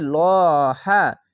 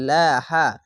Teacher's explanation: যেকোনো জিনিস ওপরে আসলেই মোটা করে হবে লহা আর যদি নিচে আসে তাহলে পাতলা করে হবে লাহা এখানে উপরে আছে তার জন্য মোটা করে পড়লাম লহা এই বিষয়গুলি